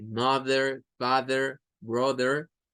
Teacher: Entonces, la terminación THER siempre vamos a hacerla vibrante. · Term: TH vibrante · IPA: /ð/